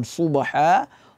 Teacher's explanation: hanya saja membedakan dia dengan huruf Sin adalah ada sifat itbaq itbaq itu melengkungnya lidah berkumpulnya nafas di tengah lidah